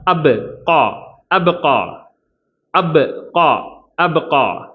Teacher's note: பால சுக்குன் வச்சு நிறுத்துறதுனால கல்கலாவுடைய எழுத்து